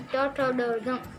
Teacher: और फिर जैसे कि ट ठ ड ढ, उसका उच्चारण मूर्धन्य कहते हैं उसको, क्योंकि उसका उच्चारण हमारी जीभ पूरी उल्टी होकर तालू को छूती है तभी उसका उच्चारण होता है।